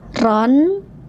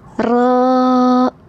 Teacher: Aturan waqaf asalnya ron. Karena waqaf maka berubah jadi ro. Panjangkan ya 2 harokat ya.